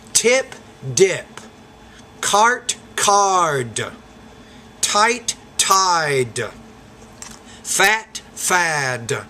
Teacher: the T is a voiceless consonant, D is a voice consonant, so the duration of the vowels will differ before those two sounds. That's why I'm saying fat, fad.